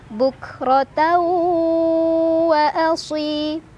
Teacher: Cara bacanya, tanwin fathah masukkan langsung ke waw sambil ditahan dulu, berdengung dulu. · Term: idgham bigunnah